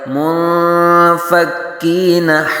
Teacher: یہاں نون ساکن کے بعد حروف اخفا میں سے فا آ رہا ہے، تو یہاں اخفا ہوگا